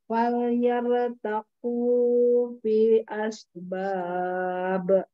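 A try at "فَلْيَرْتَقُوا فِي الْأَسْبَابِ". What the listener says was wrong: Bukan yare, yarta. Yarta.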